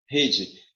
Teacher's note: Rede é uma palavra, deixa eu botar aqui, paroxítona. A sílaba mais forte de rede é o re.